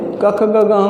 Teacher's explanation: क ख ग घ अंग बोलते हैं तो वो कंठ से होता है, कंठ में से निकलता है।